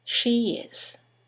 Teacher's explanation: there is a semi-vowel y that links the vowel at the end of she to the vowel at the beginning of is